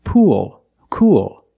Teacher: you have the long u sound followed by the dark l